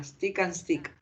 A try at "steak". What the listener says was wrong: No. No, porque esta, la primera es steak. No es stick, es steak. No se pronuncia stick, se pronuncia steak. Un bife, pero es steak.